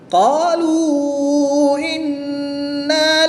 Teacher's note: واو مدہ کے بعد حمزہ دوسرے کلمے میں ہے تو یہاں پر مد منفصل ہوگی، 2 سے 3 الف تک کھینچ کر پڑھیں گے